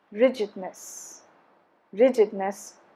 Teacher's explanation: stresses again on the first syllable